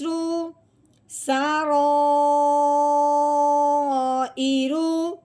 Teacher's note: رو کے اوپر پیش آ جائے تب بھی رو موٹی ہوتی ہے